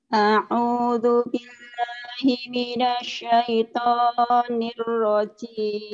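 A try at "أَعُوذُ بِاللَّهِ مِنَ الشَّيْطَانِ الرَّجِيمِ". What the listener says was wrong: Hasilnya agak nyamber ya. A'udzu billahi minasy agak nyamber gitu. Kurang nyamber.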